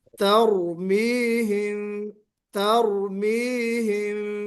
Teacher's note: ترميهم بحجارة من سجيل پہلی بات تو کوشش ترمیہم کو تا نکلے، تا باریک پڑھا جائے گا، حروف مستفلہ میں سے ہے. تر، پھر را کو موٹا بھی پڑھنا ہے، تو تا باریک را موٹا